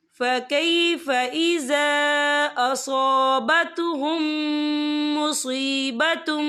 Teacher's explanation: और आगे देखिए असाबतहुम, यहाँ मीम साकिन है, मीम साकिन के बाद जो है मीम मुशद्दद वाला रूफ आ रहा है, तो यहाँ पर इदगाम शफ़वी होगा। हम पिछले मीम को अगले मीम में मदगम करेंगे और हम यहाँ गुन्ना भी करेंगे।